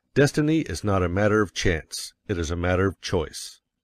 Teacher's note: you will put some emphasis on not else your hearers may think you are affirming that destiny is